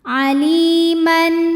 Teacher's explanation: ada ya sukun didahului baris kasrah. Maka huruf lam panjang 2 harokat. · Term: matobi'i